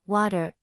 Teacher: or the American flap sound in, water, might not exist in your first language